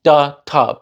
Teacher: represented by the same feature in the writing CGA du T both articulated with the tip of the tongue touching behind the teeth